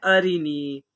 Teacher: را کے نیچے زیر ہے، زیر کو جلدی پڑھیں، تھوڑا بھی نہ کھینچیں، زیر کی آواز نیچے کو جاتی ہے۔ پھر آگے ہے یا ساکن سے پہلے زیر ہے اس لیے یا مدہ ہوگا، یا مدہ کو ایک الف کے برابر کھینچ کر پڑھیں گے، اس کو حرف مدہ کہتے ہیں۔